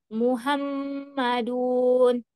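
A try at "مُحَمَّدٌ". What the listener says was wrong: Nah, dunnya tidak panjang ya. Muhammadun. Nah, mimnya ini ditahan ya karena eh, masuk di tingkatan yang paling sempurna. Jadi paling panjang tempo gunnahnya ya. Muhammadun. Nah, dia tempo gunnahnya itu dua harokat.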